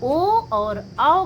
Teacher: ओ औ का उच्चारण स्थान क्या है? कंठ और ओष्ठ है